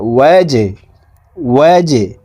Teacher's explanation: হরকতের সঙ্গে আরেকবার নিজ হরকতের উচ্চারণ হবে ওয়াও জিম জবর ওয়াজে জিম কলকলার হরফ নিচের দিকে ধাবিত করে ধাক্কা দিয়ে উচ্চারণ করতে হবে